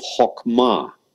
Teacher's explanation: be sure to put the accent on the last syllable